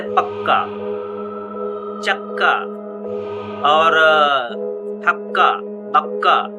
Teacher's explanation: क में अ गायब हो जाता है अ का उच्चारण नहीं किया जाता है